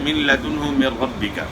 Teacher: نون کو لام میں ملا دیا ہے لیکن نون کی آواز مکمل طور پہ ختم ہو گئی ہے۔ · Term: بلا غنہ